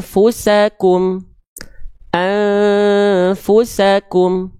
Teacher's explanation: menyamarkan bunyi an disertai dengung dua harakat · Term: ikhfa